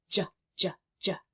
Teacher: My mouth is in exactly the same place as the ch sound, but this time my voice is on. So we're saying it like in the beginning of the sound jelly or jellyfish, or the beginning of the sound juice.